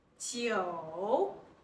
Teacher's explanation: Next, 九, read the word joke, with the falling rising tone. Joke, repeat it, 九.